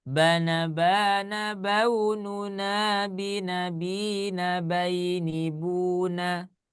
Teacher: Ketika di putaran pertama, nah ini putaran pertama gitu ya. Nah, iramanya di ujungnya di buna ya, itu dibaca datar